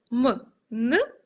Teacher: они препятствуют воздуху Выбраться наружу также воздух может проходить через нос при произношении звуков м н воздух проходит через нос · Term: носовыми